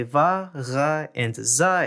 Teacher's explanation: Voiced fricatives also exist in Vietnamese, namely va, ra, and za in Northern Vietnamese